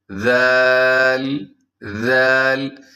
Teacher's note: ذال کو نرمی سے، اور اس میں سیٹی بھی نہیں ہے